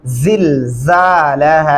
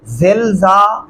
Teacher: सीटी की आवाज में पढ़ेंगे सख्ती से